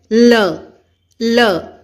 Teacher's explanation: ਸਾਡੀ ਜੀਭ ਜਿਹੜੀ ਹੈ ਉਹ ਉੱਪਰਲੇ ਦੰਦਾਂ ਦੇ ਮਸੂੜਿਆਂ ਨਾਲ ਜਾ ਕੇ ਛੋਂਦੀ ਹੈ। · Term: ਲਲਾ